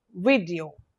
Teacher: So it's a 3 syllabic word, vid, e, o, and the stress is on the first syllable